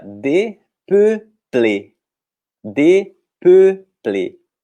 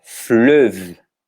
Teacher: fazer esse E com bico, que não existe em português também. É um som que a gente demora um pouquinho para fixar.